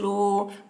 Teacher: واو ساکن سے پہلے پیش ہے، واو مدہ ہوا اس لیے واو مدہ کو ایک الف کے برابر کھینچ کر پڑھیں گے